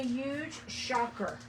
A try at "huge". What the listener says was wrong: There's an H in that letter.